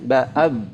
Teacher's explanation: makhrajnya ba itu kan dua bibir ya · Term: syiddah